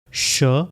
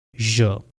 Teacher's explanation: अगर vocal cords vibrate ना हो तो it will be pronounced as श, और अगर वोकल कॉर्ड्स वाइब्रेट हो तो it will be pronounced as ज